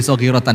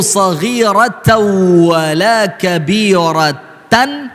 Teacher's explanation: Tanwin ketemu waw, maka namanya idgham bi gunnah.